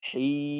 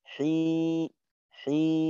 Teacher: তো আমরা যে এই টান গুলা দেই, যেমন হি, 3 আলিফ পরিমাণ সময় টান দিলাম, তো এই 3 আলিফ পরিমাণ সময়ের ভিতরে আওয়াজ কিন্তু নাকে যাওয়ার কোনো সুযোগ নেই। আমি যদি টানটা এইভাবে দিই, হি হি, নাকে গেল, এখানে নাকে যাওয়ার কিন্তু কোনো কারণ নেই।